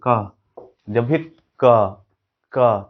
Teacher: हवा को कंठ से रोके हैं, यानी कंठ से ये उच्चारित ध्वनि है, तो इसको बोलेंगे कि ये व्हीलर है, वेलर है, ठीक है।